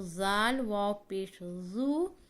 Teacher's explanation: زبان کی نوک اگلے اوپر کے دونوں دانتوں کے کنارے سے لگائیں گے